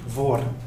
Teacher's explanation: Par exemple, si vous dites voor, dus avant ou pour en néerlandais, en Flandre, en général, vous dites voor. Dus il y a donc le R apical partout en Flandre. Sauf à Gand, vous dites voor.